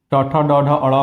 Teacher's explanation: ट, ठ, ड, ढ, अड़ को मूर्धा से बोलते हैं।